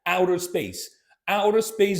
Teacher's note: this connection of outer space as if it was one word